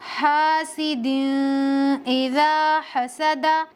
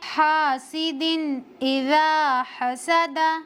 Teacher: نون کو ظاہر کر کے اپنے مخرج سے پڑھیں گے، بغیر غننے کے پڑھیں گے، جلدی پڑھیں گے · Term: اظہار